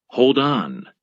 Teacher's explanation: But most two-word phrasal verbs have stress on the particle, as in hold on.